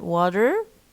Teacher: t in water. Okay, it becomes a flap